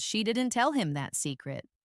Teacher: the stress is on that, meaning maybe she told him a different secret. The meaning changes depending on which word is emphasized.